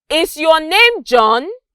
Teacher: This is a question, and when I said John, there was a rise in my pitch. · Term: rising intonation